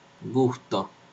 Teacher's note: tenemos una velar Sonora G como en gusto